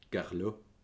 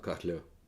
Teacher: That actually is how you'd say Carlo with a French accent, except probably with much more rounded lips and some vague stress on the end of it.